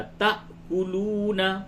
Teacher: تا یہ حمزہ پہ جھٹکا ہوگا